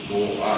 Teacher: 자, 그 다음에 12-4항 이거는 히읗 탈락 규정이지. 얘는 히읗 받침 어간 뒤에 모음 어미가 오면 그러면은 마이너스 1 되면서 히읗이 탈락해